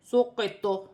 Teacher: وقف کی صورت میں زبر گر جائے گی اور طا ساکن ہو جائے گی۔ طا جو ہے حروف قلقلہ میں سے ہے، وقف کی صورت میں تھوڑا سا قلقلہ پیدا ہوگا، جیسے سقیط۔